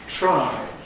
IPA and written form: tɹ̝̊aɪ (try)